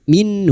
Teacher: Nun sukun bertemu ha idhar halqi. Nun sukun dibaca jelas tanpa mendengung.